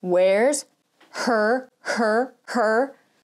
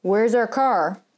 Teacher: where's our car this sticky note does not move that's because i'm not pushing air out when i'm saying the h because i'm deleting the h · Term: lazy english